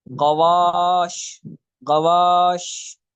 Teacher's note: شین کو ادا کرتے وقت اس کے مخرج میں آواز پھیل جاتی ہے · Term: صفت تفشی